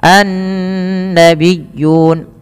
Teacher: Nun sendiri juga ada bacaan guna maka ia ditahan sepanjang dua harakat